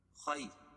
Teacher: تنوین کے بعد خا کو موٹا پڑھیں گے